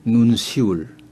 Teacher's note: 됩니다 예사 소리로납니다 그다음에 눈시울이 거 눈시울로 씁니다만 남한에서는 눈시울 하는데 북에서는 어 눈시울 가운데 시옷이 보통 소리로나요